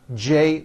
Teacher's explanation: an american j sound ch unvoiced j voiced you see that everything here stays the same you just add voicing for the j